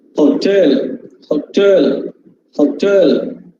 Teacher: This last syllable is stressed.